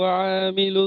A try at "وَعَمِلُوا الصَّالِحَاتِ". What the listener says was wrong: মাশাআল্লাহ, এখানে দেখেন ওয়ামিলু, এই যে আইন জাবার আ টান দিয়ে ফেলেছেন। আইন জাবার আ, এটা হারাকাত রয়েছে। ওয়ামিলু, ওয়ামিলু সলিহাতি।